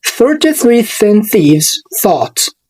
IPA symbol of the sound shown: θ